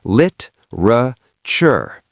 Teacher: Literature, three syllables. The e is gone.